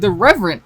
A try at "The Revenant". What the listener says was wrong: sounds like you're saying the Reverend, like the priest,